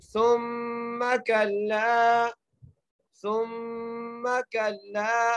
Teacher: अच्छा, सा के ऊपर जो है ना पेश है, सा को मीम से मिलाते हुए गुन्ना करना है, क्योंकि मीम जो है मुशद्दिद है, इसलिए हम मीम पर गुन्ना करेंगे, सा को मीम से मिलाते हुए।